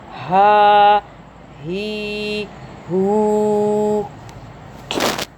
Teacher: ये हा जो है ये आपकी इसकी आवाज़ जो है जहाँ से गर्दन शुरू होती है वहाँ का हिस्सा, वहाँ से आएगी।